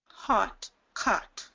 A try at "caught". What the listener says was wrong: Drop that again. So you're kind of pulling the jaw up a little bit more for this one. So hot, caught. Same exact vowel. Hot, caught.